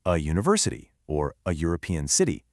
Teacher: they start with a U sound, like literally the sound of the word U, which is a consonant sound